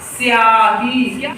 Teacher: जब आधा अक्षर से किसी शब्द की शुरुआत होती है तो आधा अक्षर बगल वाले अक्षर में मिल जाता है और या का उच्चारण ज्यादा सुनाई पड़ता है और सा का कम